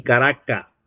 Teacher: Y finalmente tenemos la elisión del fricativo alveolar sordo